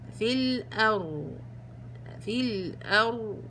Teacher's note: الراء عشان ما يصيرش فيها تكرار بسيطة جدا، ضعي لسانك في مخرج الراء بلطف بلطف، واعطي زمن الراء اللي هو التوسط ، واعطيه كمان صوت وجريان جريان الصوت، في الأرض في الأرض